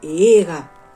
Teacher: en esta palabra se observa un alargamiento de vocal, la vocal E.